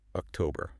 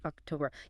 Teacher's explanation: It is October. Ah, so the power, the weight of the word is right there in the middle. Exactly. It's that middle syllable.